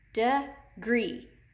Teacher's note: The long E is accented in the second syllable in the word degree.